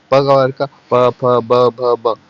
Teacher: इसमें होठ से उच्चारण होता है क्योंकि इसको बोलेंगे तो आपका होठ सटता है